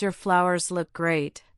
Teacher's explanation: the pitch is higher on great to show genuine enthusiasm